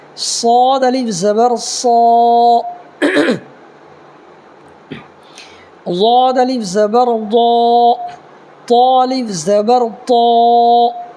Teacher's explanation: صاد، ضاد، طا، ظا، یہ چاروں حروف کو پور کرنا ہے